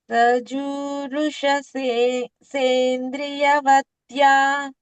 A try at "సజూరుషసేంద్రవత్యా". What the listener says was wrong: సేంద్రియ కాదు ఇంద్రియ అంటే మళ్ళ అది వేరేపోతది